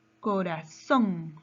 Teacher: en la palabra corazón su mayor fuerza de voz está en son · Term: palabra aguda